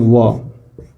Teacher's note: वकारस्य दंतोष्ठम, वकारस्य माने व, ठीक है, ये जो व है, ठीक है, वह दंत और ओष्ठ दोनों से उच्चारित होने वाले वर्ण है